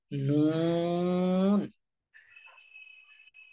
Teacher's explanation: 9 নম্বর মাখরাজ আগা সামনের উপরে জিহ্বার আগা তার বরাবর উপরে তালুর সঙ্গে লাগাইয়া